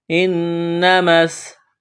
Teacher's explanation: نون مشدد پر غنہ کریں گے، آواز ناک میں چھپائیں گے، میم کو سین کے ساتھ ملانا ہے۔